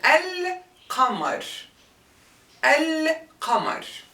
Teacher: So qamar, shams, see here, when we prefix it with the definite article al, see here, the lam, you can hear the sukun, al-qamar, al-qamar. So when the lam in the word is pronounced clearly, al, the letter after it is considered as a moon letter. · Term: lunar lam